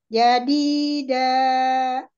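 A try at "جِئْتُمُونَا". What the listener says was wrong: Ya, kayak gitu kan nggak ada hamzahnya. Ya, dilatih aja bolak-balik yang ada kalau dibaca yang A itu belakangnya pasti hamzah jadi harus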